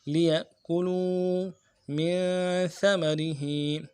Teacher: لِيَأْكُلُوا میں کاف کے پیش کو ہونٹوں گول کریں گے اور لو میں واو مدہ ہے، ایک الف دال میں کھینچیں گے ، لِيَأْكُلُوا مِن ثَمَرِهِ، میم میں نون ساکن غنہ کریں گے،